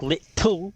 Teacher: our generation doesn't pronounce t's as much as the older generations do like in words like little